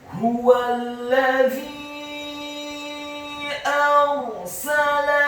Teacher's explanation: Kata arsala, alifnya dibaca tipis, fathah 1 harokat, huruf ra-nya dibaca sukun, isti'la wa tafkhim, bergetar dan tebal, karena sebelum huruf ra yang sukun adalah huruf yang harokatnya fathah. Dalam hal ini adalah huruf alif.